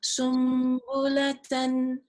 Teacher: So this is iqlab. Because Nun Sukun followed by a ba would be replaced by a mim. The Noon Sukun would be replaced by the meme because of the letter Ba that's following it, and that is the rule of Iqlab.